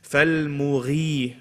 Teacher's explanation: Gha, heavy, but when it has a kasra, least amount.